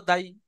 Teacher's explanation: দালকে তিন আলিফ টান দিয়ে বলতে হবে, কিন্তু ইয়া সাকিন লাগিয়ে উচ্চারণ করার সময় তাড়াতাড়ি পড়তে হবে, যেমন দাল ইয়া জাবার দাই।